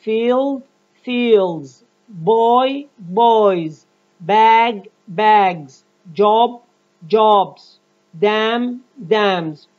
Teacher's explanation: pronounce the S morpheme ending as Z after voice sound except after Z and J.